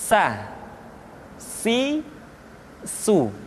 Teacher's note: Berikutnya huruf sa diucapkan sebagaimana kita mengucapkan huruf sa, yaitu ujung lidah di antara dua gigi seri kita.